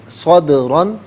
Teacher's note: دال ساکن ہے لیکن چونکہ یہ حرف قلقلہ ہے تو ساکن تو کریں گے لیکن آواز لوٹتی بھی محسوس ہوگی